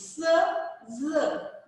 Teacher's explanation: the blade of the tongue comes very closer to the alveolar ridge and very narrow passage is there, and the air passes through that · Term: alveolar fricatives